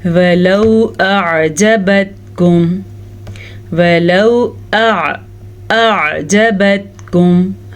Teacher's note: حمزہ اور عین کا فرق واضح کریں، لیکن اتنا واضح نہ کریں کہ ان دونوں کے درمیان میں گیپ پیدا ہو جائے یا کوئی لفظ لمبا لگنے لگے۔